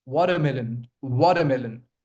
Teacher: Sometimes you will notice that this T actually becomes light D.